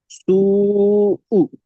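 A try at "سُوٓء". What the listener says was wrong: মাশাআল্লাহ, আরো একটু টান দেন। 3 আলিফ পরিমাণ হয়নি। এখানে যদি আপনি পেশ পড়েন তাহলে সিনটা কি আপনি তাড়াতাড়ি পড়তে পারবেন? সিনটা কি কিন্তু আপনার তিন আলিফ পরিমাণ টান দিয়ে পড়তে হবে।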